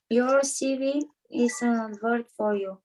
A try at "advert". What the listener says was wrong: Advert се произнася на първата сичка ударение. Advert for you.